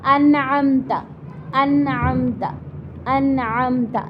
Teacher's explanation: اظہار میم ساکن کا کیا ہوگا، اس کی ڈیفینیشن تعریف کیا ہے کہ میم ساکن کے بعد با اور میم کے علاوہ کوئی بھی حرف آئے گا تو میم ساکن کو ظاہر کر کے غنہ کے بغیر جلدی پڑھیں گے، غنہ نہیں کریں گے تو ظاہر ہے جلدی پڑھیں گے ہم اس کو۔